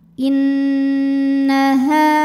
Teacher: Inna. Nunnya hukumnya gunnah musyaddadah karena nun bertasydid. Cara bacanya dengung, tahan dengungannya kurang lebih 2 harokat.